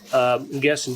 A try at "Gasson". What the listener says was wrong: A silent N.